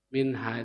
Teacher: Minha itu izhar, bacanya jelas, tidak dipanjangkan.